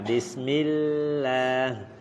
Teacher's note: Lam kalau kalimat Allah kalau sebelumnya kasroh tipis, mil, jangan dinaikkan kali lidahnya.